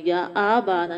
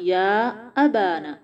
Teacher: قالو، قو موٹا ہوگا، قوف بھی موٹا ہے، الف بھی اس کے ساتھ موٹا ہوگا لیکن ہونٹ گول نہیں کرنے، لو واو مدہ ہے، ٹائم دیں گے، یا ابانا، یا منہ کھولنا ہے، جبڑا کھول کے ادا کریں اور آ کو لمبا نہیں کرنا